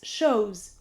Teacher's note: To show plus the ending s makes shows, and we pronounce the ending s with the sound of z because it is preceded by a vowel.